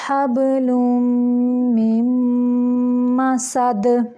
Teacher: تنوین کے بعد میم ہے اور میم کے اوپر شد ہے، یہاں پہ میم مشدد ہے تو یہاں پہ ہم اس کا غنہ کریں گے، یعنی آواز کو ناک کی جڑ سے نکالیں گے